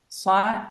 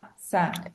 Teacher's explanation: صاد has a whistling sound. Seen has a hissing sound. Both of them, when they carry a sukun, the sound can be extended.